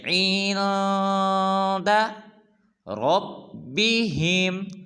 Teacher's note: را کو پر ادا کریں گے